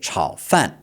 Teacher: So, this is also third tone and then fourth tone, okay? Chao fan.